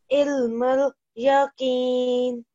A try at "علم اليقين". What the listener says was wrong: Try saying this qaf with a thicker sound.